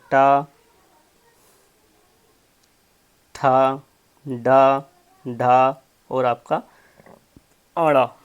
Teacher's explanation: आपका ये जो ट वर्ग होता है ये आपके मूर्धन होते हैं।